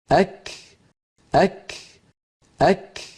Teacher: کاف کا مخرج زبان کی انتہا سے ہے، لیکن ساتھ تالو کا نرم اور سخت حصہ بھی، یعنی جس جگہ ہڈی والا تالو اور گوشت والا تالو ملتے ہیں وہاں زبان کی انتہا کو لگائیں گے قاف کے مخرج کے قریب، تو کاف ادا ہوگا۔